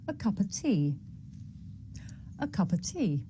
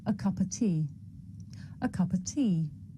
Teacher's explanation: The words a and of become schwa.